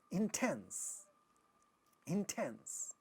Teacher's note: The second syllable is getting stressed, and in initial position you have ta, so that is getting aspirated